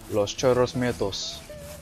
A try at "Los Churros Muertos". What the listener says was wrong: It's Los, not Las. Los is for...